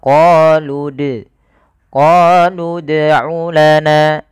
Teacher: dia memantulkan tanpa ada huruf hamzahnya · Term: qalqalah